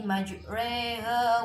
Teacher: Majreha di sini ada bacaan imalah, tulisannya majroha dibaca majreha karena mengucapkan antara harokat fathah dan harokat kasroh